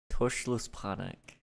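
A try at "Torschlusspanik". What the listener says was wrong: Tosh. Although it looks like it's Torschluss panic. Because it has an R, but it's German, so you don't pronounce it.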